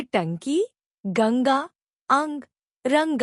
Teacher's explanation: इसे अनुस्वार कहते हैं। यह नाक की सहायता से उच्चारित किए जाते हैं।